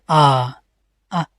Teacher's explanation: अर्ध संवृत चार टाइप हो गए विवृत में क्या होता है इनके उच्चारण मुख द्वार पूरा खुलता है